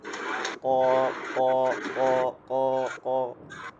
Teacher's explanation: আমাদের কটাকে একটু হার্ড করে কণ্ঠ থেকে